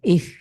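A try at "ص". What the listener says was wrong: এটা অনেকটা সিনের মতো শোনাচ্ছে অথবা সিনের মতো শোনাচ্ছে।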